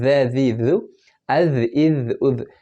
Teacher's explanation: اس میں وسل ساؤنڈ نہیں ہے یا وائبریشن ساؤنڈ نہیں ہے